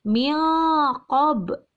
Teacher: Menyamarkan nun matinya berubah menjadi eng. Kenapa? Karena bertemu dengan huruf qaf. · Karena ada nun mati bertemu dengan huruf qaf, sehingga cara membacanya dengan samar atau berubah menjadi eng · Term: ikhfa